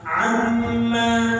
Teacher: Mim bertasydid itu 100% dari batang hidung.